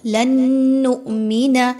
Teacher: لن نؤمن نون ساکن کے بعد نون کا حرف ہے، نون مشدد کا حرف آ گیا، یہاں پر غنہ کرتے ہوئے پڑھیں گے، ادغام ود غنہ، یعنی آپ نے ایک نون کی آواز کو دوسرے نون کی آواز میں مکس کر کے غنے کے ساتھ پڑھنا ہے